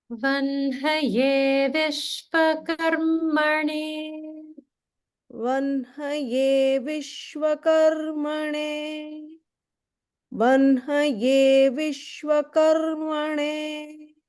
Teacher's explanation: it's spelled with an H followed by N, but we pronounce it as vanhaye, like an N followed by the H sound. And so that's the same rule as what we follow with Brahma or Brahman.